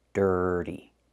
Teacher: The T makes a fast D in the middle. D, dirty, and make that sound, like in burger.